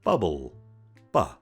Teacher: Plosives. The B sound is a voiced bilabial plosive made by completely blocking the airflow with the lips and then releasing it explosively. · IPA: / b /